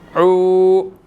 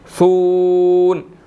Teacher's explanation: واو مدہ ہے، 1 سیکنڈ لمبا کریں گے